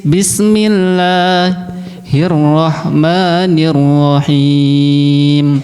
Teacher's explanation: Jalalah sebelumnya dibaca kasroh ya. Jadi harus tipis.